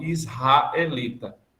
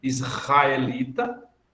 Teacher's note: nos demais lugares, o R precedido de uma consoante, a gente o pronuncia como uma aspiração